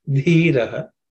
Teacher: This dhi comes from the tha which is the fourth letter in the third varga so it has to be aspirated.